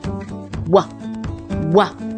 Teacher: a glide where both lips are together and we pull them apart